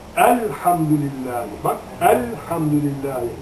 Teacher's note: dilimizi lamların mahreçine mutlaka basın azıcık tutun hemen çekmeyin